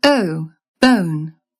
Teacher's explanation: RP switches the first sound out for a schwa, an sound. So RP has O, bone.